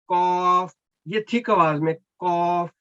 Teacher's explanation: जो नुक्तों वाला काफ है, आप समझे कि सबसे पीछे जुबान का जो हिस्सा है उसको पहले ऊपर उठाएं, और जो आपकी एयरवेज गले की तरफ ऐसे हवा नवाज उसको बंद कर दें उस हिस्से को जुबान के साथ।